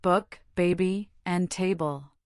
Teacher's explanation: Just think of it as a lip popping sound with voice.